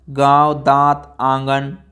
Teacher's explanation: हवा आपके मुख के साथ साथ नाक से भी निकलती है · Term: अनुनासिक स्वर